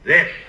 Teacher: this very strange, huge raise in pitch on this, which is very unusual. This! Right over the top of his pitch range.